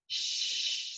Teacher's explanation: is literally flowing as if my tongue were concave like this the air is literally flowing with between like in the middle of my tongue and it's coming out my teeth which are clenched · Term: sh sound